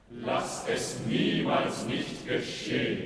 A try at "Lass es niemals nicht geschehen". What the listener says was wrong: No, but she does an inflection. She goes, niemals nicht geschehen, not niemals nicht geschehen. It's not a sack of potatoes on every note.